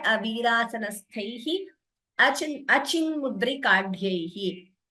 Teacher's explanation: Tha and here again dha are Mahaprana.